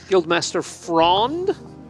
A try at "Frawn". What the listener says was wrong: Fron, no D. F-R-A-W-N. Not like Tron.